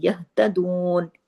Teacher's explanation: ये हा, इसकी आवाज सीने की तरफ जाती है, यहतदून, ये गले से नहीं पढ़ा जाता, ठीक है। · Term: 2 चश्मी हा